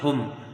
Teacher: میم ساکن کے بعد دوسری میم آئی ہے تو ادغام شفوی، ٹھیک ہے، غنہ کے ساتھ ادغام شفوی ہوگا